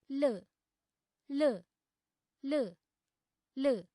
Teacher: ल उच्चारणसमये दन्तस्पर्शः भवति। अतः ल वर्णस्य उच्चारणस्थानं दन्ताः सन्ति